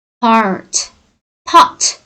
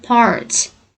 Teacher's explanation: Britaniyada mana shu r talaffuz qilinmaydi shunaqa holatlarda, lekin Amerikada r talaffuz qilinadi, chala. Lekin chiroyli talaffuz qilinadi Amerikanikida.